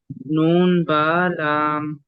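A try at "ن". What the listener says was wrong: नून को नाक से नहीं पढ़ेंगे। नून बालाम।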